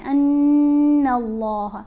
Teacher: یہاں پر ہم نے نون کو جب لام سے ملانا ہے، نون کے اوپر تو غنہ ہے، ان اللہ، لام کو موٹا پڑھیں گے اور لام کو لمبا بھی پڑھیں گے